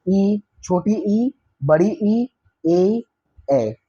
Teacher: अग्र स्वर में जिह्वा का आगे वाला भाग उठता है